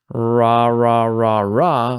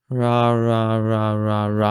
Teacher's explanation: my tongue raises up and then it pulls back. And the more I pull back, the stronger the R becomes.